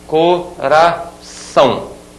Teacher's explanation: A última sílaba é mais forte do que as outras. Eu digo que esta aqui é a sílaba tônica.